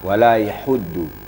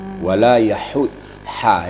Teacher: Di ha-nya itu hamas, ada hembusan angin ya. Jadi angin dulu baru bunyi hurufnya.